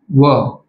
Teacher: एकमेव असा एकच वर्ण आहे जो दंत आणि ओठ यांच्या एकत्रीकरणातून तयार होतो. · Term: दंतोष्ठ्य वर्ण